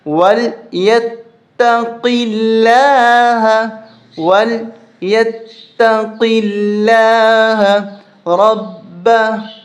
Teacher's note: لفظ اللہ سے پہلے اگر زیر ہو، یہاں پر زیر آ رہی ہے تو لفظ اللہ باریک کر کے پڑھا جائے گا